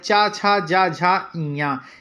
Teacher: इसमें चा छ और ज झा जो होते हैं इन्हें स्पर्श संघर्षी व्यंजन भी कहा जाता है · चा छा जा झा इया ये हमारे जो पांच है ये तालव्य होते हैं